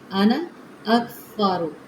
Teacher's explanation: सा नहीं करना, स की सीटी नहीं